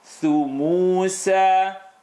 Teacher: tip of the tongue behind the top teeth. Thu, bring it out for the edge.